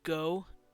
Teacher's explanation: Even though that is an O sound, the O isn't just an O, it's an OU. It's this. It's called a diphthong.